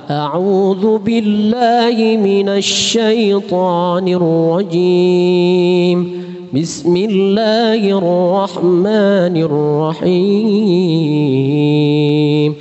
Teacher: Irama rentaknya lebih cepat ya dibanding dengan tilawah. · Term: murattal